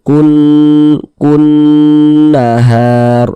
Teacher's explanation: Huruf nun bertasydid, huruf mim bertasydid, hukumnya gunnah musyaddadah. Maka kita gunnahkan kun nahar.